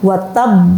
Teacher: karena itu baknya itu ada syiddahnya, maka ketika membacanya juga dimantapkan terlebih dahulu syiddahnya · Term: qalqalah kubro